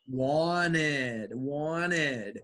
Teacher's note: why is the T silent here in the pronunciation because it's after n